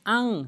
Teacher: বলতে হবে আন নাকের ভিতর নিতে হবে